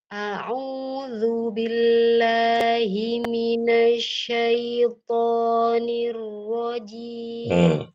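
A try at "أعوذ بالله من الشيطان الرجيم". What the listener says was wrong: a'udzunya sudah bagus, tapi kurang monyong. Coba Ibu ikuti suara saya. U. U. Udzu. Udzu. A, U, Zu.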